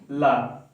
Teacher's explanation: पार्श्विक व्यंजन, वायु जीभ के बगल से निकले